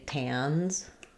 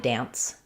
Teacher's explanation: Whereas this one, an N and S like that, like if I say tans, he tans very easily. Then we have the Z sound, and my N is longer.